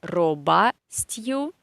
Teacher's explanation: The second o is not stressed, so we say робостью.